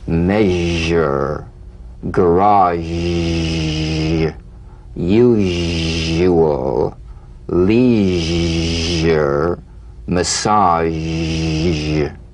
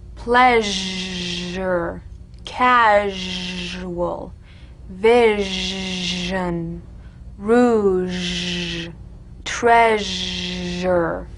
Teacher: All suggestion of the SH must vanish. Feel the SH overridden by the deep rumbling vibrations of the ZH, resonating against the teeth and the tip of the tongue. If you don't feel your teeth vibrating on this sound, you're not making a good zh.